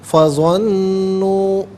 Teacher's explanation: یہاں ظنوا میں واو مدہ، اوپر مد کی علامت مد منفصل ہے، مد جائز بھی کہتے ہیں، منیمم اس کو 3 سے 4 حرکات کی مقدار کھینچ کر پڑھنا چاہیے، میگزیمم اس کو 5 سے 6 حرکات کی مقدار کھینچ کر پڑھ سکتے ہیں۔